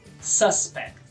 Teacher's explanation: Suspeito em inglês, sílaba tônica primeira.